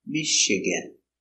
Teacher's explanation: Stress on the first syllable